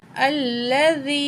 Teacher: या साकिन है, उससे पहले ज़ेर है, या मद है, यहाँ 1 पॉइंट हम खींच के पढ़ेंगे।